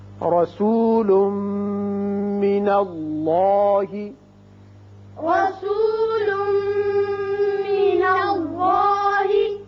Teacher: تنوین کے بعد میم آ رہا ہے لہذا یہاں ادغام غننے کے ساتھ ہوگا · اللہ کا لام پر ہوگا اس لیے کہ پہلے زبر ہے